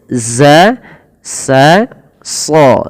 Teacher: Makhraj zai itu sama sebagaimana sin dan shad ya. Shad, sin, zai itu sama lidahnya